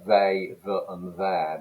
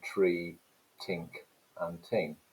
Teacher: to be more extreme in multicultural london english you've also got at the beginnings of words th stopping so those words that begin with fricatives those th sounds tend to be replaced by sounds so uh they that and there become day dem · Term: word initial th stopping